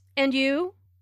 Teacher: notice the rising intonation on and you this shows that is interested